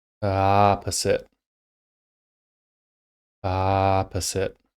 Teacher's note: I'm only stretching on that first vowel sound. Everything else is being said at the normal rate.